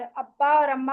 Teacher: हम दो होठों को मिलाते हैं तो हमारा बा मीम और बा और मीम अदा हो जाता है · हम दो होठों को मिलाते हैं तो हमारा बा और मीम अदा हो जाता है। और अब्बा और अम्मा पढ़ते हुए आपने सिर्फ अपने माइंड को ट्रेन करना होता है और आपका जो है बा और मीम अदा हो जाता है।